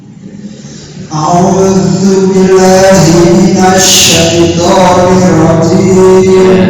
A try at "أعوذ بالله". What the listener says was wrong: Billahi ada tasydid ya. Billah, bukan billahi ya. Bukan a'udzu billahi kan seolah-olah lamnya cuma satu padahal ada tasydid. Billah, a'udzu billahi